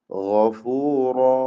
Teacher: ഗൈന് റാഇന്റെ അലിഫ് ഇവയ്ക്കൊക്കെയും തഫ്ഖീം നൽകണം, തടിപ്പിച്ച് ഉച്ചരിക്കണം